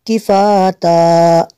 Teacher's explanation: double زبر کو وقت میں الف سے چینج کر لیں گے